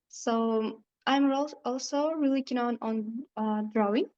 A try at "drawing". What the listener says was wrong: I'm also really keen on drawing, and again, mispronunciation of drawing, but I understand what the candidate is saying. Drawing doesn't have any w sound. We write it with a w, with a w, but we don't say drawing, drawing.